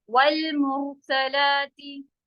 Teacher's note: رو heavy ہے، سا بالکل سیدھا